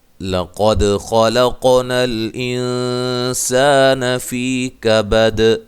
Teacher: لام کو باریک، قاف کو موٹا، دال پہ قلقلہ کرنا ہے